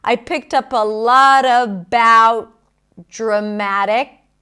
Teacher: So the T connects with the D, no breaks there.